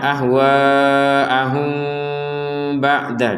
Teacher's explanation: maka mim sukun ini dibacanya dengan samar